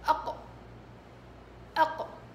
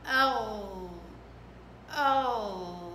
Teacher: لكن الصفات تختلف، شوفي صفة أهم صفة للقرع اللي هي الشدة في القاف، أق أق، لكن الغين أو أو، شوفي كيف بيجري الصوت، في جريان صوت، أو أق أو. ففي فرق، في فرق بين قاف وغين من حيث صفة الشدة والرخاوة. الغين رخاوة، القاف شدة، القاف قرع بالشكل هذا، الغين لا، ملامسة ملامسة، تمام.